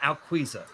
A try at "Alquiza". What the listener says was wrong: Close. Alquiza. the U is kind of silent. Yeah, Alquiza.